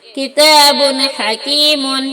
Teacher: کتاب حکیم، کاف زیر کی، تا الف زبر تا، کتاب دو پیش بن، کتاب، حا زبر حا، کاف زیر کی، حکیم، میم دو پیش بن، حکیم. یہاں دو پیش کی تنوین کے بعد حروف حلقے میں سے حا آیا ہے، تو تنوین کو ظاہر کر کے بلا غنہ کے جلدی پڑھیں گے